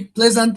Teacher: The stress lies here on the first syllable.